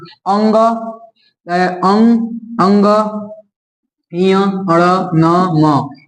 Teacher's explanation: ये नासिक यानी नाक से बोला जाता है नाक को बंद करके इसको नहीं बोल सकते हैं इसमें हवा जो है नाक से निकलता है न बोलने में